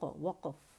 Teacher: قاف جو ہے اس میں قلقلہ آئے گا اور وہ ساکن ہے اور فا ساکن ہے.